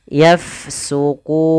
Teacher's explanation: huruf fa dia sukun, maka kita alirkan nafasnya. Yafsukun. Kemudian pada lafal kun ada bacaan mad arid disukun, yaitu bacaan yang terjadi disebabkan karena ada sukun akhir, sukun arid atau sukun yang timbul karena waqaf.